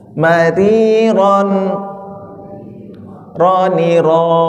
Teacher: dia getar namanya takrir ya takrir kayak terulang-ulang getarannya tapi jangan banyak-banyak ya